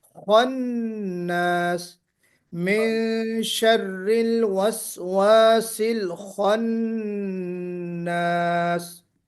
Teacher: کل ہم نے آپ کو بتایا تھا کہ 7 حروف، حروف مستعلیہ جن کو ہم کہتے ہیں، ان میں سے یہ حرف خا بھی ہے. تو خا کو نکالتے ہوئے بھی ہمیں بولڈنس، آواز میں ہیوینس لانا ہے، موٹی آواز کر کے پڑھنا ہے. اس حرف کو بولڈ کر کے پڑھنا ہے، پر کر کے پڑھنا ہے.